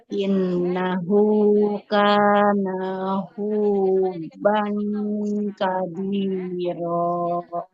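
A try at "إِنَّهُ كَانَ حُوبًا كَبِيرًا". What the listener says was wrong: Nunnya jangan dipanjangkan Ibu ya. Karena tidak ada huruf alifnya. Huruf nun berharokat fathah, di depannya tidak ada alif, maka tidak boleh dibaca panjang. Innahu kana huban kabiro. sekali Ibu, nggak boleh dipanjangkan.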